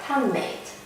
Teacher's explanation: Sometimes d changes into n under the influence of the preceding n.